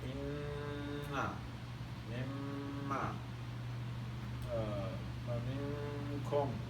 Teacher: Yeah, 1 sound, which is gunna, which is the noon mushaddada, mim mushaddada, and you know that nasal sound that we make during idgham, ikhfa, iqlab